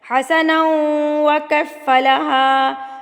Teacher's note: ادغام مع الغنہ، یعنی غنہ کے ساتھ ملایا۔